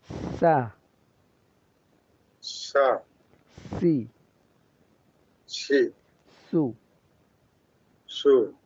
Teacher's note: বলা হয় একটু নিচের দিকে বলতে বললে তাহলে উচ্চারণটা শুদ্ধ হয় মাখরাজ হচ্ছে জিহ্বার আগা সামনের নিচের দুই দাঁতের আগার দিকে অর্থাৎ নিচের দুই দাঁতের মাঝখান পেট নিচের দুই দাঁতের পেট ওই · মাঝখান উপরে লাগলে শিন উচ্চারণ হয় জিহ্বার মাঝখান লাগবে না উপরে জিহ্বার আগা নিচে দুই দাঁতের পেট